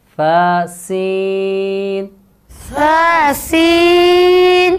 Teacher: سین کو سخت ادا کریں گے اور اس میں سیٹی آئے گی